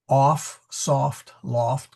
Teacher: The O is short, off, soft, loft, kind of an aw sound.